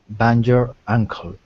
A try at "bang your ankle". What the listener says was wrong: Not jer, but der. Bang der ankle.